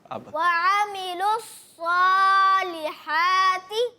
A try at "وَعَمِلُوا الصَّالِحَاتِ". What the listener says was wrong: آپ کی آواز میں تھوڑا سا جو ہے نون کی طرف جا رہا ہے، میلان ہو رہا ہے، یہ نہیں ہونا چاہیے.